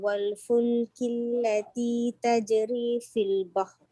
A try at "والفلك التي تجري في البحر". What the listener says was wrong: Kalau berhenti dekat situ mesti bunyikan ra betul-betul. Tajri fil bahr. Nak betulkan ra ni.